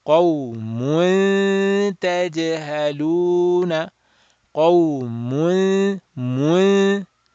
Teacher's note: Qawmun, mun. So you're going from mun, mu, your mouth is rounded, to a flat letter, and you're doing that gunna. So you're flattening the gunna.